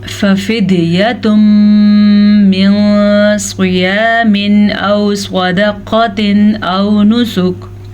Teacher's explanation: نون ساکن کے بعد صاد حروف اخفا میں سے ہے تو ہم نون ساکن کو چھپا کے پڑھیں گے, غنے کے ساتھ پڑھیں گے.